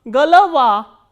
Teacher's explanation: G, o, l, o, v, a, and a is stressed and these 2 o are unstressed. So, these unstressed o will be pronounced as a. So, g, l, va, galava.